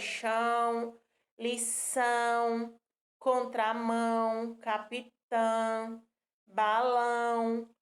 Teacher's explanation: pois bem todas essas palavras se você pronunciar com bastante atenção você vai ouvir que ela tem um som nasal né como se a gente tivesse com nariz entupido